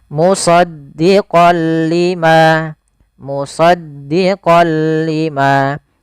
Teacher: Tidak lagi dibaca musoddiqon lima, tapi langsung masuk musoddiq lima · Suara nunnya kepada huruf lam, tapi tidak boleh disertai dengan gunnah. Maka dinamakan dengan idgham bila gunnah, hanya masuk saja. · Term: idgam bila gunah